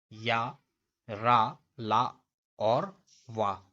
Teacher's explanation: या, रा, ला और वा, ये सघोष और अल्प प्राण हैं। और जो यहाँ पे या और वा है, इसको अर्धस्वर यानी ध्वनि जो कभी स्वर हो कभी व्यंजन, इसको अर्धस्वर बोलते हैं। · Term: अंतस्थ व्यंजन